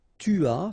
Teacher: final S not pronounced